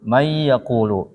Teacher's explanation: Digabungin may yaqulu, hilang nunnya. Ini disebut dengan idgham.